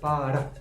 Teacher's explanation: la R lo que hace es para, hace un leve gesto y se va